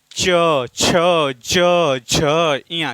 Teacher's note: तो च वर्ग का उच्चारण तालव्य से होता है। तालव्य का अर्थ है कि जीभ के बीच वाला जो भाग है वह ऊपर के हिस्से से टकरा, यानी ऊपर छत से टकराता है।